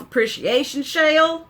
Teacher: I love how when I'm talking like the S is turned into an SH sound